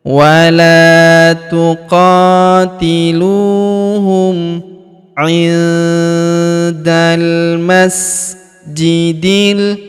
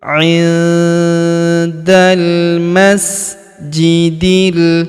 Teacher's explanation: Kemudian huruf da langsung sambung masuk ke huruf lam yang berharakat sukun. Langsung masuk ke sini alifnya tidak dibaca. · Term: Alif lam qamar